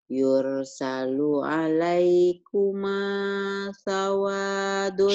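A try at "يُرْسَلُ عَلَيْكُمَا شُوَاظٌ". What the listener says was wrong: syuwazun. Bukan sawadun, Bu.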